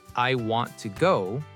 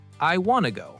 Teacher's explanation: The words want and to become one new word, wanna. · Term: connected speech